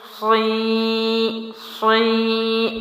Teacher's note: صاد کا سٹارٹ میں نے موٹا لیا اور زیر جو ہے کھڑی زیر اس کو باریک ادا کیا۔